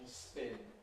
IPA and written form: sp⁼ɪn (spin)